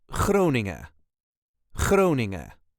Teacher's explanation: there is a very light emphasis on the first part of the wording cing n as you can hear not every